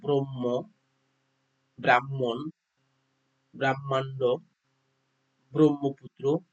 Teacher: এখানে ম আগে উচ্চারিত হবে এবং পরে হ উচ্চারিত হয়।